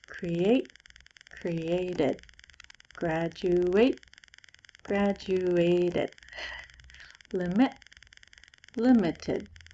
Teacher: these e-d sounds give the word an extra syllable it looks like this this word has two syllables this word